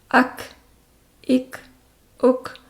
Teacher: اس کی ادائیگی کے وقت منہ سے ہوا کی ہلکی سی آمیزش، جس کو ہمس کہتے ہیں، وہ بھی آواز نکلتی ہے تاکہ آواز میں سختی نہ رہے